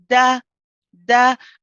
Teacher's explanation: the tip of the tongue is pressing at the top, and I let go as I pronounce the fatha